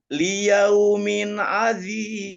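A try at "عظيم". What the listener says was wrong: Nah, itu pakai zal itu azim. Nah, zi itu zal. Itu pakainya bo ya, bukan zal ya. Liyaumin azim. Azim, bukan azim.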